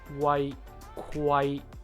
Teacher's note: To properly pronounce the KW sound is actually just like the GW sound, with the difference being we only vocalize after we release the airflow. So in slow motion it would be like Kwai, Kwai.